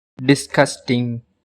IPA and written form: dɪsˈɡʌstɪŋ (DISGUSTING)